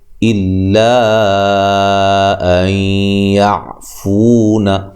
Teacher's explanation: این نون ساکن کا یہاں ادغام مع الغنہ ہے ، یعفو فو مدہ ہے، او وولین ہے، یعفو والذی ذی